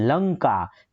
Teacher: લ જે છે એ છે લઘુ પરંતુ છે લઘુ પરંતુ એની ઉપર મારે ઉચ્ચાર આપવો પડે છે લંકા તો વજન મૂકવો પડે પડે છે એટલે આ શું થઈ